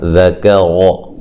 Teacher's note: ذال کاف باریک، را کو موٹا، ٹھیک ہے، ذَكَرَ، ٹھیک ہے، را کو موٹا ادا کرنا، لمبا کسی کو نہیں کرنا، زبر زیر پیش والے حرف کو لمبا نہیں کیا جاتا۔